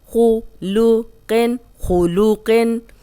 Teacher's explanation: اب خو موٹا، قوف موٹا، لام باریک.